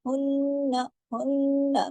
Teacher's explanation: یائلین کی بھی پہچان یہ ہے کہ اس سے پہلے والے حرف پر زبر ہوتی ہے, اس کو آتے تم نہیں پڑھیں گے, آتی تم احداہن, ہا جو ہے گلے سے پڑھا جائے گا, دال کے اوپر کھڑی زبر ہے, 1 الف کے برابر کھینچے گا. ہن, ہن, نون پہ تشدید ہے, غنہ ہوگا. پورا گننے کا حق ادا ہوگا، اکمل گننا ہوگا، کیونکہ نون اور میم جب بھی شد کے ساتھ آتے ہیں ان کے ساتھ ہمیشہ بڑا گننا ہوتا ہے جو کہ اکمل گننا کہلاتا ہے، اور گننا کہتے ہیں آواز کو دیر تک ناک میں چھپانے کا نام ہے گننا۔